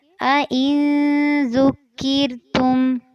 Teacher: اَإِن میں دونوں حمزہ کو واضح کریں